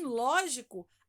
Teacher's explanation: Porque a sílaba tônica da palavra lógico é a antepenúltima.